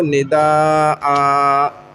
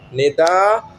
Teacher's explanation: 2 زبر کی تنوین میں ایک الف کے ساتھ بدل کے پڑھیں گے. نداءن ہے، وقف ہوگا تو نداء.